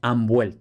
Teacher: que sea porque justo antes de la b hay una n una n sabemos que en contacto con una B se convierte en m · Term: asimilación